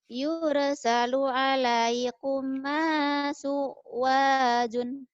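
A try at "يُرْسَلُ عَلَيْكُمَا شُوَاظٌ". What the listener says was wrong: Yursalu alaikuma syuwadun. Jangan suwadun. Syuwazun. Jangan diputusin bacanya.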